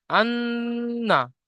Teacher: তাজদিদ নুনের উপরে হওয়ার কারণে নুনকে গুণনা করে পড়তে হবে